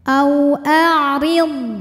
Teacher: Huruf ra berharokat kasrah dibaca secara tarqiq. Ya, bacanya tipis.